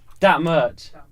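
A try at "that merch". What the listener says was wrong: Dat. You gotta pronounce the T though. Dat.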